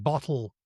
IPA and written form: bɒtl̩ (BOTTLE)